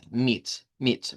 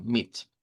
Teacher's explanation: La m y la t quedan igual. Lo que va a cambiar aquí es que esa i va a ser una i corta, que es este símbolo.